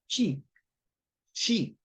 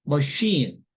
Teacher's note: 그 목소리 울리지 않고 쉬 할 때 그 소리입니다